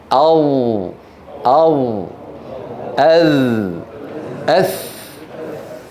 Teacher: الحروف اللثويه يعني الثاء والظاء والذال ا التي نضع فيها اطراف الثنايا العليا على اطراف على طرف اللسان